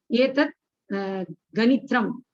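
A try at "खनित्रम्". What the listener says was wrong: Kanitram. Still problem is you're not correcting. Kanitram, not ganitram.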